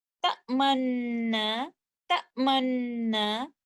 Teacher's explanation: I will only pronounce one noon, but I will show the dhamma of the first noon only by the circling of the lips, but no sound of the vowel. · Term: idgham with ishmam